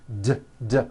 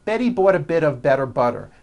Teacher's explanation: notice that you do not hear any T sounds. T, t. They're only D's, d, d, which are voiced. Go over this poem a few times.